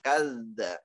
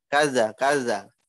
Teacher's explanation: Kemudian kadzdzaba kaf tipis, zalnya tasydid tekan ke zalnya setelah kaf.